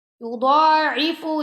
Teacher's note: یضاعف کی ضاد کو بھی موٹا پڑھنا ہے اور فا کو لمبا نہیں کرنا آپ نے